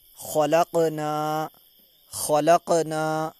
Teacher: قاف کی آواز واپس لوٹ کر آئے گی کیونکہ حرف قلقلہ میں سے ہے